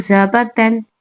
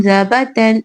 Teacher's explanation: तनवीन और नून साकिन की आवाज सेम